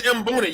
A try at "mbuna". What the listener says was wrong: No. Mbuna. There ain't no E in front of there. Mbuna. There's no E. So yeah, it's silent as most. There's no E. It don't get more silent than not being there.